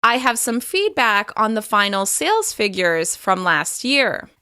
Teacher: there's a slight pause after the words feedback and figures.